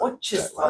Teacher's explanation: we pronounce with a stress mark o, right? If it would be unstressed, that would be a, right?